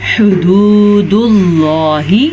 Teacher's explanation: یہ واو مدہ ہے اسے ہم کھینچ کے پڑھیں گے اور ہا کے مخرج کو واضح کر کے پڑھیں گے